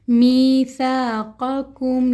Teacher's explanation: پہلا قاف موٹا والا قاف ہے اور دوسرا قاف نرمی سے پڑھا جانے والا قاف ہے